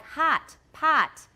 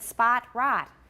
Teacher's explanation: h-o-t in american is the ah sound